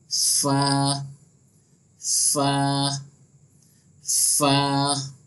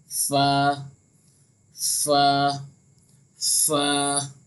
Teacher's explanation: ऊपर के दांतों का जो किनारा होता है ये नीचे के होठों के जो तर हिस्से होते हैं ना वहाँ पर लगता है।